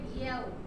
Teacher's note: Kita kena nipiskan dulu ya, lepas tu terus muncung. Sebab waw ni makhraj dia pada bibir.